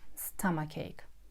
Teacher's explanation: And mind that o is pronounced like ah